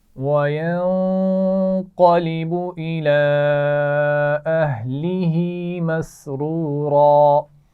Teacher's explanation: मसरूरा दो दफ़ा रा आ गया है और इसको मोटा पढ़ना है